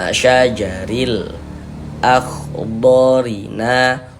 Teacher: Alif lam qamariyah itu disebut juga dengan izhar qamariyah karena huruf lamnya dibaca jelas, terbaca jelas